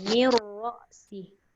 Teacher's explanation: Masuk terus pada ra dan tebal.